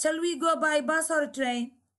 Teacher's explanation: there is rising intonation in the last word